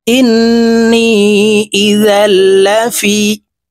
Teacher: ওয়াজিব গুন্না হরকতের বামে নুনের উপরে তাসদিদ আছে, তো এই হামজা নুনের সাথে গুন্নার সহিত পড়ব। হামজা নুন জের ইন, নুন ইয়া জের নি, নি এক আলিফ টান হবে, জেরের বাম পাশে জজমালা ইয়া মদের হরফ।